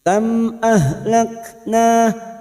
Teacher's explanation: layin kita lunakkan Yar kam mim sukun bertemu Hamzah Idhar syafawi mim sukun dibaca jelas tanpa mendengung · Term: idhar safawi